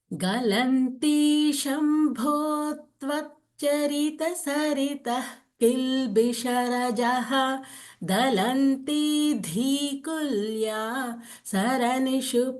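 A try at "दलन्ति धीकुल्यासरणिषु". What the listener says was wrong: Here you should not pause after Dhikulya. Dhikulya Saranishu.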